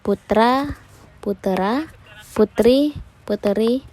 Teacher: Anaptikis atau suara bakti adalah perubahan bunyi dengan jalan menambahkan bunyi vokal tertentu di antara dua konsonan untuk memperlancar ucapan. Bunyi yang biasa ditambahkan adalah bunyi vokal lemah.